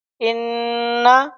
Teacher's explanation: نون مشدد ہے اس لیے اس کو ہم غنہ ایک الف کے برابر کر کے پڑھیں گے